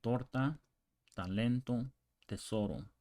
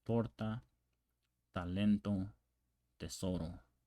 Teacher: So also the T in English is very explosive. So with the tip of the tongue against the back of the upper front teeth. So tip of the tongue, the back of the front teeth.